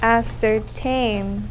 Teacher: There are 3 syllables and the third syllable gets the accent.